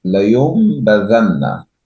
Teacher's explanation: You replace the Noon Sakin with a meme. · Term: Iqlaab